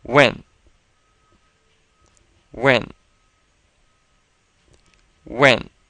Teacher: and this is a fourth tone word so let's pronounce that fourth tone is very quick and sudden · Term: 4th tone